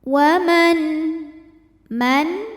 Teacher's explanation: ada nun sukun menghadapi huruf halqi atau huruf tenggorokan yaitu Hamzah cara bacanya Nun dibaca dengan zhar atau jelas bunyi nnya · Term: zhar halqi